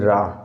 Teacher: जीभ हमारी लुंठित होती है, रा मतलब 3-4 बार कंपन करती है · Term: लुंठित व्यंजन